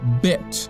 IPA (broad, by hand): bit